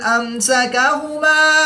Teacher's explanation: نون ساکن کے بعد حروف حلقی میں سے حرف حمزہ ہے تو یہاں پر اظہار ہوگا، نون ساکن کو ظاہر کر کے پڑھیں گے، غنہ نہیں کریں گے. میم ساکن کے بعد حرف سین ہے تو یہاں پر اظہار شفوی ہوگا، میم ساکن میں غنہ نہیں کریں گے.